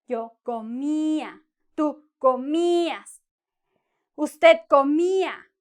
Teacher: you see the I is long and strong